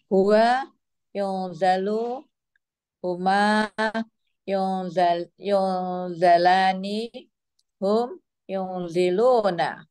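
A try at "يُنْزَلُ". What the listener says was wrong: No, bukan yunzi. Yunzilu atau yunzalu. Iya, itu tidak berubah. Kan yang berubah yang akhir, bukan yang tengah.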